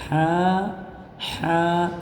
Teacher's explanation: इस हा को गले के बीच वाले हिस्से से अदा करेंगे